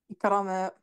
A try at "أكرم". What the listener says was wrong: Là, pourquoi tu dis i? Tu vois, ça reste la même chose. Akrim